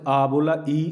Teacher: निरनुनासिक इनको मौखिक भी, क्योंकि हवा जैसे आ बोला, ई स्पष्ट है, केवल मुंह से, नाक से हवा निकली नहीं रही